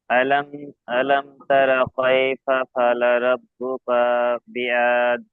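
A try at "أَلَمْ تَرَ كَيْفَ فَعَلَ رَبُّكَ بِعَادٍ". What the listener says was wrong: এই যে কা টান দিয়ে ফেলেছেন, ফাআলা ভালো করে উচ্চারণ করবেন। আলাম তারা কাইফা ফাআলা।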